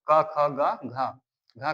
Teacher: क, ख, ग, घ कहां से आते हैं? कंठ से आते हैं।